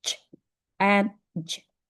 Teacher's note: next is post-alveolar, when your tongue touch behind the ridge